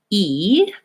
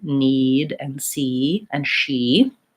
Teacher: So for example, when I'm saying E, the vowel we were talking about earlier, that's in need and see and she, my tongue is high and in the front